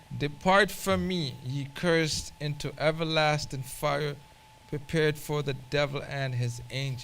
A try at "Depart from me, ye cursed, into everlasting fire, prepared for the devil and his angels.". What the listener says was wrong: Yeah, with more conviction, more bass.